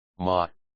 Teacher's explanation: Some syllables are pronounced without a definite tone. They are short, light, and weak. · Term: The neutral tone